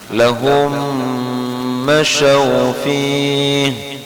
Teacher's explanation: Kullama adaa'a lahum, kemudian lahumnya itu di situ ada apa namanya, idgham mutamathilain, bacanya ditahan